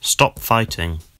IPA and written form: stɒp ˈfʌɪtɪŋ (¡Deja de luchar!)